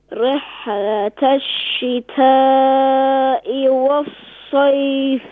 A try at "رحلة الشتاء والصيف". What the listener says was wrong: ہاں ہا پر قلقلہ نہ کریں ہا جو ہے قلقلہ لیٹر میں سے نہیں ہے ریح نہ کریں. رحلت الشتاء والصيف.